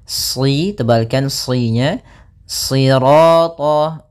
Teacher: shadnya tebal, jangan dibaca dengan huruf sin